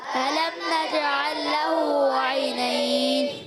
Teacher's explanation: کہ لام کے بعد وہی حرف دوبارہ آ رہا ہے، تو اس کو ادغام مثلین کہتے ہیں، ٹھیک ہے؟ اس میں کوئی غنہ وغیرہ نہیں ہوگا، مگر ادغام ہوتا ہے، اور ادغام بلا غنہ ہوتا ہے۔ عینین، یا ساکن سے پہلے زبر ہے، یا لین، پھر یا ساکن سے پہلے زبر ہے، یا لین، دو یا لین ہے، اور وقف کرنے میں ہو جائے گا مد لین عارض۔